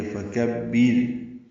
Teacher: وَرَبَّكَ فَكَبِّرْ، واو ہونٹوں کی نہ تمام گلائی سے ادا کریں گے، را پر پڑھیں گے، با سے ملائیں گے، کاف باریک ہے، فکبر میں کاف باریک ہے اور با سے ملانا ہے، بر میں را باریک ہے